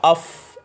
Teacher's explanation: सनाया उलिया के किनारे जब नीचे वाले होंठों के तर हिस्से से लगेंगे तो वहाँ से फ़ा अदा होगा।